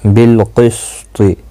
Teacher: قاف مستعلیہ ہے، پر پڑھا جائے گا